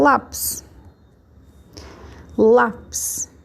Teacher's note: lápis a palavra a sílaba mais forte é o lá a última sílaba é o PIS então a penúltima é o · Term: paroxítonas